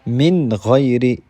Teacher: یہاں پر جو نون ساکن ہے اس کے بعد جو لیٹر آیا ہے وہ ہے غین، اور غین بھی جو ہے نا حروف حلقی میں سے ایک حرف ہے، تو یہاں بھی غنہ نہیں ہوگا، اور نون کو ہم ظاہر کر کے پڑھیں گے، اس لیے اس کو کہتے ہیں اظہار والا قاعدہ۔ من غیر، یہاں جو نون ہے وہ ظاہر ہوتا ہے، مطلب آپ کو سنائی دے رہا ہے کہ مطلب نون بھی یہاں پر جو ہے نا ادا ہوتا ہے۔